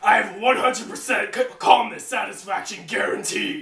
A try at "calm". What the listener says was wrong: You kind of stuttered on calm.